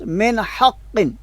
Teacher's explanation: غنہ کے ساتھ نہیں پڑھا